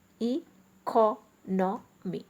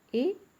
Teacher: in case of economy, the stress is on CO, e-co-no-me. The stress is on the third syllable. Whereas when it comes to economic, the stress is on the penultimate syllable, that is the last syllable from the end, economic, because we are adding IC suffix here. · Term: shift in the stress